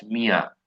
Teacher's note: ইও, ইউ এর আওয়াজ কিন্তু তিন ধরনের হয়, যেমন আমি যদি বলি যে এরকম আপনার মিয়া, হ্যাঁ, আয়ের মতন আওয়াজ, এই না মানে একটু নাকানো আয়ের মতন আওয়াজ